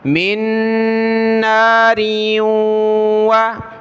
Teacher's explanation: دوسرے نون کے ساتھ، پہلے نون ساکن کو چھوڑ دیں گے، میم کو اس نون کے ساتھ ملایا تو ناک میں آواز پیدا کریں گے